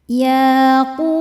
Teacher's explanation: Hukumnya mad tabi'i dhahiri sebab ada waw sukun sebelumnya berharokat dhammah. Cara bacanya dipanjangkan 2 harokat.